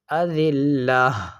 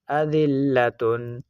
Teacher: جیسا کہ اس جگہ پر ہم وقف کر رہے ہیں تو اس گول تا کو ہم ہا ساکنہ سے بدل کر پڑھ رہے ہیں